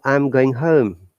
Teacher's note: i'm going home look here the stress is i and home